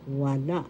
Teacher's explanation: First syllable wa second syllable la wala the second syllable has the accent